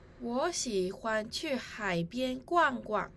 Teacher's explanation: In this sentence, the words 欢 and the second 逛 should have a neutral tone. These 2 words were read with the first tone and the fourth tone respectively.